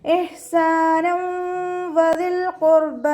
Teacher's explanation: തെൻവീനിനെ വാവിലേക്ക് ലയിപ്പിച്ച് ഉന്നയോട് കൂടി ഓതി കൊടുക്കുക കേട്ടോ.